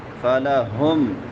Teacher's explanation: ہا حلق کے آخری حصے سے جو سینے کے ساتھ ملا ہوا ہے